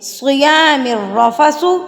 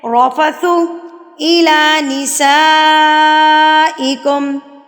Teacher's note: صیام الرفث، را کے اوپر زبر آ گئی ہے تو را ہم نے پر پڑھنا ہے